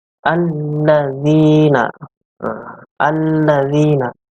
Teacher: Membacanya itu memasukkan atau mengidghamkan ke huruf syamsiyah, yaitu lam. Jadi membacanya adalah alladzina. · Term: alif lam syamsiyah